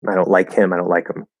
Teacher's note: a reduction could be a complete drop of the sound like with him